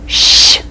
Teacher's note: Sh is a strong hissing sound.